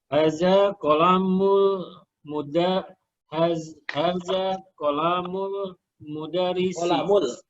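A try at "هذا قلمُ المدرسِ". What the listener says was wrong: Qalamul, lamnya pendek, Pak. Ada qalamul.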